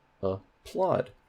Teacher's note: So that plaud has primary stress.